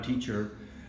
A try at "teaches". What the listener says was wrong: Teaches. Put an S out there. Listen for the S.